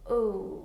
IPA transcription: ʊ